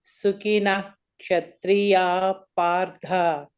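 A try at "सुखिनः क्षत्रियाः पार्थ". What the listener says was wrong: Sukinaha Kshatriya Partha. Sukinaha Kshatriya Partha. When Ksha comes, the Visarga in front of it should be pronounced fully.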